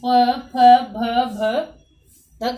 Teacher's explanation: यानी कि ये दंते हैं और ये है ओष्ठ है। बिल्कुल जब हम इनको बोलते हैं तो हमारे होठ आपस में मिलते हैं